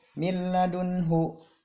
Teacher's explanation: nun mati bertemu dengan lam. Lamnya tidak didengungkan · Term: idgham bila gunah